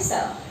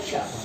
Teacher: यानी अगर हम जीभ को नीचे लेकर आते हैं तो वो सब होता है, जीभ को हम पूरे ऊपर, मान के चलिए ये हमारी जीभ है, जीभ नीचे स, जीभ ऊपर श